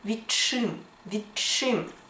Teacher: т уподібнюється і ми чуємо і вимовляємо подовжений звук ч